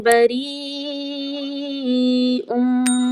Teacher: यहाँ पर आप देखिए या के ऊपर मद्दा है और जज़म भी है, तो हमने यहाँ पर क्या करना है, या को पढ़ना है और इसको खींचा जाएगा 4 या 5 अलिफ की मिक़दार